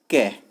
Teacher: कै जब मैंने बोला तो मुझे ऐसा लगा जैसे मैं बाद में ए भी बोल रहा हूँ। तो इसको जब मैंने तोड़ा तो मुझे पता चला इसमें ए ध्वनि मतलब ए स्वर छुपा हुआ है।